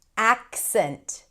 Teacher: So the C is kind of held and then you shift into the S.